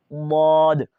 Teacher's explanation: اب دیکھیں مخرج کا کیا لکھا ہے کہ زبان کی کروٹ یعنی سائڈ کا کنارہ اور اوپر کی داڑھوں کی جڑ سے